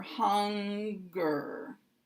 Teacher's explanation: these words are divided between the n and the g because they're two separate [Music] Sounds